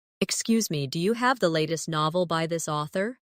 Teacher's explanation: In casual speech, do you often sounds like dia.